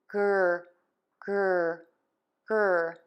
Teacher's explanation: For the r I keep the tip of my tongue down in the bottom of my mouth and the back of the tongue continues to be pulled up. GR GR GR I do close my lips slightly when I move to that r sound, and I move to more of a square tense lip shape. You do not want to add a sound between the g and the r.